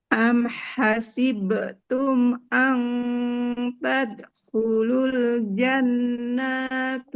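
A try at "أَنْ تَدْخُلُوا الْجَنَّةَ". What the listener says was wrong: Yang pertama keliru, nunnya nggak panjang. Yang kedua, taknya bukan tuh. Bukan dhammah ya. An tadkhulul jannata.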